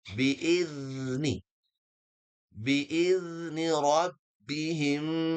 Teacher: huruf zal ini Kalau masih ingat, ujung lidah bertemu dengan ujung gigi seri atas